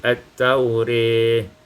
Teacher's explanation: Pada ayat yang ke-66, at-taurah, imalatu fathatir ra, dibacakan fathah imalah ra menjadi at-taurih.